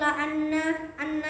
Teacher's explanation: anna itu dengung dibaca dengan hukum bacaan gunnah